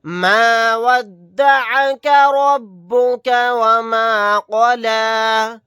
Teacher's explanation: را کو موٹا یعنی پر پڑھیں گے کیونکہ را کے اوپر زبر ہے